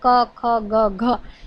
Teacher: ગુજરાતી ભાષામાં એક સ્થાનના સ્પર્શ વ્યંજનોમાં ક ખ ગ ઘ એવો અઘોષ ઘોષ અલ્પપ્રાણ મહાપ્રાણના ભેદક ધર્મવાળો ચતુર્વિધ ધ્વનિ ભેદ વપરાય છે